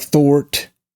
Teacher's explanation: you will hear the rhotic part in some, like in Brooklyn